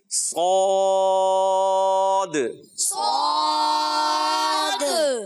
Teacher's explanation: زبان کا درمیانی حصہ اور اس کی جڑ اوپر تالو کی طرف اڑ جاتی ہے, تو یہ حرف جو ہے موٹا ہو جائے گا